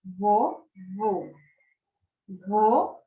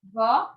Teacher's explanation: com a palavra vovô o som é fechado ali só vô vô eu tenho a palavra vó o som é aberto